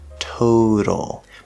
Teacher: stress so we have a nice strong t toe but then in the middle we have the letter t at the start of an unstressed syllable so it's going to be a flapped d sound